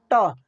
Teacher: का दांत है उससे थोड़ा पीछे और तालू से हट के तालू से हट के और दांत से हल्का पीछे होके वहां पे जुबान आपका लगेगा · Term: ट वर्ग